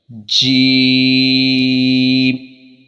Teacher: جیم کا مخرج یہ ہے کہ زبان کے درمیان اور اوپر کے تالو کے درمیان سے یہ ادا ہوتا ہے، اور جیم میں جنبش پیدا ہونی چاہیے۔